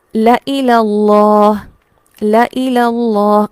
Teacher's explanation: گویا الف موجود ہی نہیں ہے اور یہاں پر صرف لام زبر لا ہے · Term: الف نہیں پڑھا جاتا